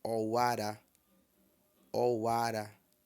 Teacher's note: ou ara tudo em tom baixo tá